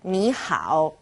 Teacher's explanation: two third tones turn into second and third